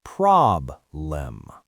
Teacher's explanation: the stress is on the first syllable, prob-lem, so that letter E becomes a schwa